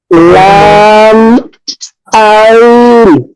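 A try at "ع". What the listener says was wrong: আইনটা একটু মোটা হবে।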